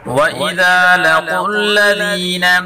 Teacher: ذال کو نرمی کے ساتھ پڑھیں گے اور قاف کو پر پڑھیں گے